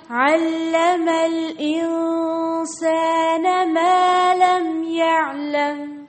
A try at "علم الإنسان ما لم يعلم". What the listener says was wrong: فرصة پڑھیں علم الإنسان حمزة کو حمزة پڑھیں عين نہیں